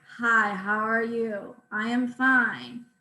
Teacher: their speech is typically quiet and breathy monotone so the pitch is the same um it's almost robotic hi how are you i am fine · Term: hypokinetic dysarthria